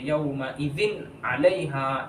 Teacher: یہاں پر نون کی آواز ناک میں نہیں چھپائیں گے، غنہ نہیں کریں گے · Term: اظہار